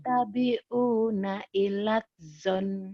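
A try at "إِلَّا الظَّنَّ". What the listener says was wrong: illaz kurang nyambernya. Illazon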